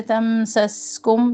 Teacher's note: اور سین ساکن دونوں کا دھیان رکھیں، میم بھی نہ ہلے، سین میں سختی اور سیٹھی واضح ہونی چاہیے